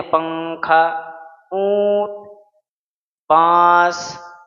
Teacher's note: جیسے اردو میں ہم بولتے ہیں پنکھا، اونٹ، بانس کی ادائیگی پر نون کی آواز ناک میں چھپ کر گنگنی سی نکلتی ہے، یعنی کلیئر نہیں نکلتا · نون کی آواز کو ناک میں چھپا کر غنہ کے ساتھ ایک الف کی مقدار کھینچ کر اس طرح ادا کرتے ہیں کہ نہ تو ادغام بالغنہ کی آواز ہو اور نہ ہی اظہار کی، بلکہ دونوں کے بیچ کی آواز یا حالت ہو۔ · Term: اخفا